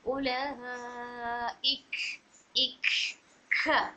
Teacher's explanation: ख की आवाज़ क्यों आ रही है, क्योंकि सिफत हम्स की वजह से